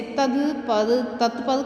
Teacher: इसमें घोष ध्वनियों को अघोष कर देते हैं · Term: अघोषीकरण